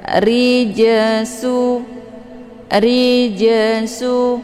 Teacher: sukun yang terdapat di pertengahan kalimat ini dinamakan dengan secara bacanya huruf jimnya dipantulkan dengan pantulan ringan jadi pantulkan itu dengan pantulan sekedar riju ru ya jangan riju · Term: Jim sukun